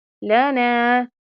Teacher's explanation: نون کے اوپر زبر ہے اور الف ہے، تو یہاں پر الف مدہ والا کانسیپٹ ایڈ کریں گے، ایک الف کے برابر لمبا کریں گے۔